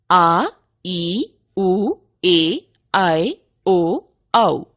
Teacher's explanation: जिन स्वरों के उच्चारण में ह्रस्व स्वरों से दुगना यानी 2 मात्रा का समय लगता है उन्हें दीर्घ स्वर कहते हैं।